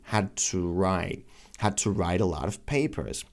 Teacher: the D is not released